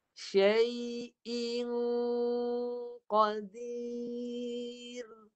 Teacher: Dan dengung tebal. Qaf sifat dia tebal, dengungnya pun tebal. Ikut sifat pada qaf, pangkal lidah tinggi. Syai'i, lepas i, dengung tolak sampai atas.